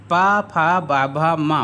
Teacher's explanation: पा वर्ग का उच्चारण स्थान कहाँ से है? ओष्ठ है।